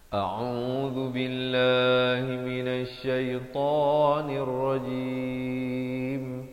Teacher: Pastikan au dua harakat, lafz jalalah dua harakat, ta dua harakat dan diwaqafkan dengan juga dua harakat